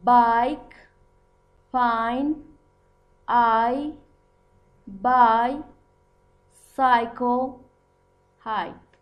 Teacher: For the production of this diphthong, the tongue starts the sound in the position of Spanish A, low center, and moves to the position of long E, high front. It sounds like I. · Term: Long I